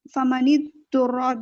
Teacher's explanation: را پر فتح آ رہا ہے تو را کو موٹا کر کے پڑھیں گے